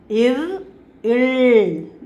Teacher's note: மேல்வாயை நாக்கின் நுனி வருடுவதால்